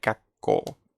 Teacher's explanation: Al doblar la consonante, para pronunciarlo mejor es como que se alarga un poco.